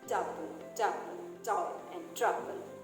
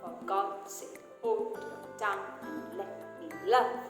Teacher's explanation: you have a stressed syllable followed by an unstressed syllable, which is the opposite of the iamb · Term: trochaic pattern